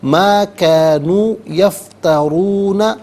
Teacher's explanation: عنہم ما کانوا یفترون. یفترون میں را پر پیش ہے, را پر زبر یا پیش ہو تو پر پڑھتے ہیں, زیر ہو تو باریک پڑھتے ہیں, یہاں پر کر کے پڑھا جائے گا.